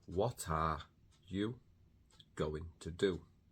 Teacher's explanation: because the word what ends with a consonant, in this case a T, and R starts with a vowel, the T becomes the first sound of the next word. So what are, instead of what are, yeah, instead of completing the sound of what and then starting the sound of are, we say what are you going to do?